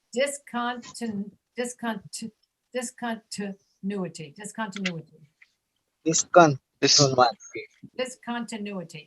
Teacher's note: the second I, the sound is reduced to a schwa